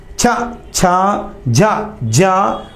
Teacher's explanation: రెండో వర్గం చవర్గం చ ఛ జ ఇని అంటే నాలుక దవడం తగులుతది ఇవి దవడల నుంచి పుడతాయి కాబట్టి తాలవ్యాలు అంటారు. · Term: తాళవ్యాలు